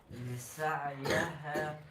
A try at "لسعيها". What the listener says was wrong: یہ سعیہ، یا کے اوپر زبر لگا دی، زیر ہے اس کے نیچے.